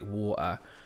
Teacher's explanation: they're doing like the glottal stop, which is like water.